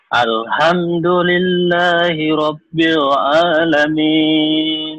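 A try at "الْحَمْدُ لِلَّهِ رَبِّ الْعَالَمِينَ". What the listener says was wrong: Nanti latihan ainnya ya. A-nya belum seksi tuh. Ainnya belum kena. Nih kayak ini ya.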